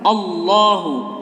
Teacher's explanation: Yang pertama adalah Qul huwallah. Lafaz Allah di sini merupakan lafzul jalalah tafhim. Lafaz Allahnya itu tebal.